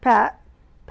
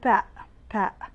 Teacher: final T is not pronounced in American accent